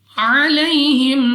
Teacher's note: یا ساکن سے پہلے زبر یا لین بغیر کھینچے بغیر جھٹکا دیے پڑھیں گے۔